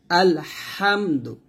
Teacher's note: এই হাটা যখন উচ্চারণ করবেন হলকের মধ্যখান থেকে হাটা উচ্চারণ করতে হবে আলহামদ দাল পেশ দু টান দিবেন না আলহামদু আলহামদু এরকম করবেন